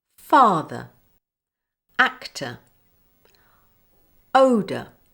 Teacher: the first syllable is stressed and the second syllable is unstressed the unstressed syllable is replaced with the schwa sound uh